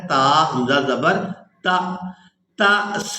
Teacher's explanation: تا کو حمزہ ساکن کے ساتھ ملانا ہے تو جھٹکے کے ساتھ ادا کرنا ہے